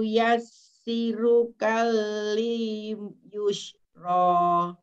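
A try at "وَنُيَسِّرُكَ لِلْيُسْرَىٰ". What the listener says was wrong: Baik, Ibu, bukan enggak boleh kal nggih. Kenapa? Soalnya di depan kaf lamnya yang pertama tidak disukun atau disida. Jadi wanu yassiru kalil yusro. Wanu yassiru kalil yusro.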